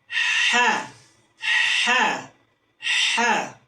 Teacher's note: Huruf ha tipis dia memiliki sifat rakh tapi berbeda dengan H besar. H tipis udara dulu yang keluar baru suara. Ha ha ha. Dan berikutnya dia memiliki sifat istifal yaitu pangkal yang turun.